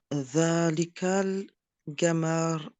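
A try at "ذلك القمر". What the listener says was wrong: El-Qamar. Qamar. Alors, du coup, tu prononces pas le L au début, faut faire la lésion. Zalika al-Qamar.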